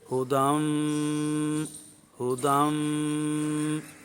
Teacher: ناک کے بانسے میں ایک الف کی مقدار تک آواز کو جاری رکھیں گے تو یہ غنہ زمانی مظہرہ ہوگا۔